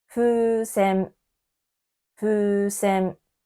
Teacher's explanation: 風船のふの母音もうです。ふの隣には母音のうがありますから、ふも伸ばして発音をします。